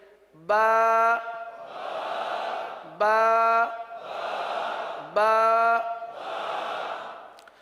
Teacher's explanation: با ہونٹوں کے، دونوں ہونٹوں کے تر حصے سے ادا ہوتا ہے